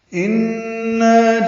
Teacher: ان نون مشدد پہ غنہ ہے، غنہ واجب ہوتا ہے، آواز ناک کے باسے میں لے جا کر 2 حرکات تک ٹھہراتے ہیں.